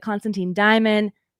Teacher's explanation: AE is technically a diphthong in Latin, and it should make an I sound. So it's supposed to be like Constantine Diamond.